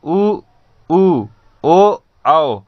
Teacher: जिस स्वर के उच्चारण करने में या बोलते समय हमारे ओठों की आकृति एक वृत्त के समान बन जाती है, उसे हम वृत्ताकार स्वर कहते हैं।